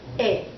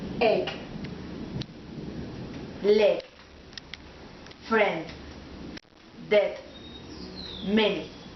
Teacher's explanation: For example, egg, leg, friend, dead, many. This sound is really short. The tongue is in the middle of the mouth, and the mouth is a little closed. E. Repeat after me. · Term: short vowel sound E